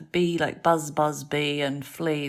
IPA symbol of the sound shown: i: